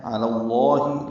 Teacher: علی اللہ میں علا پر کھڑا زبر تھا، ملانے کی وجہ سے زبر لائے ہیں، علی اللہ، لام اس میں جلالہ کو پر پڑیں گے